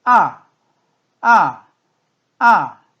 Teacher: 가장 높은 솔에서 시작을 해서 아래에 도까지 뚝 떨어지는 소리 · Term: 사성